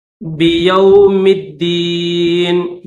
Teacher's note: میم کو ڈائریکٹ دال کے ساتھ ملا دیں گے